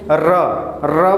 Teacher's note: र बोलिए तो जीभ जैसे लग रहा है लपेट रहा है, र है ना, तो ये इसलिए ये लुंठित हो गया।